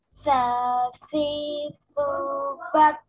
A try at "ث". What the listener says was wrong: Nah, ini juga terhenti. Ingat jangan sampai macet, ya. Jangan bat. Nah, gitu itu nggak boleh kalau macet. Harus ngalir nih contoh. Sasi subat. Bas. Tuh, ada ngalir udaranya. Bas.